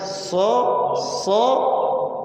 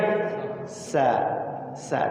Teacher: Jadi gerak mulutnya itu berubah, antara lidah dengan gerak mulutnya itu berubah. Kalau dia isti'la, dia ngangkat agak mencucu ya si mulutnya itu.